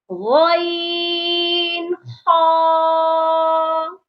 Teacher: یہ حلق کے سب سے اوپر والے حصے سے ادا ہوتے ہیں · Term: حروف حلقی